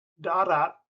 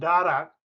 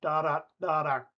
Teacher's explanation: in Ilocano, there's no aspiration of those consonants at the end of the word. So darat, meaning sand, and darak, meaning blood, to the foreign ear often sound like the same word, da da da da, because they don't aspirate those consonants.